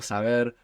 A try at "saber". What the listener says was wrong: Saber, no, with a B. Saber. Yeah, there is a grey area between V and B, so it will change between languages.